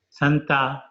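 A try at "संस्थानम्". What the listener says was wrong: How can be Santa? Sam is there and Sta is there. It must be Samsta, right? Not Samsta. It is Samsthanam.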